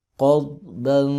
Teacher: قاف زبر ضاد قض، با دو زبر بن، قضبا. قاف بھی موٹا ہے، ضاد بھی موٹا ہے، لیکن ضاد پہ کلکلہ نہیں کریں گے، قضبا نہیں پڑھیں گے اس کو.